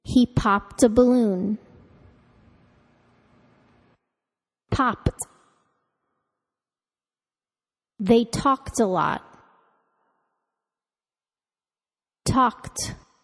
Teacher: verbs ending in voiceless sounds caused the ed ending to be pronounced as the voiceless with no vocal cord vibration